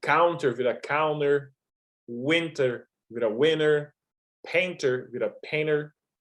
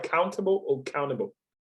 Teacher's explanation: No inglês americano, vogal N, T, esse T e depois outro vogal, esse T geralmente morre